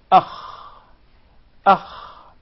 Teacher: So the articulation point is the closest part of the throat.